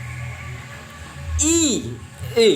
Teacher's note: Vokal berdasarkan tinggi rendahnya posisi lidah. Vokal tinggi I ya, berarti I nya lidahnya agak ke atas.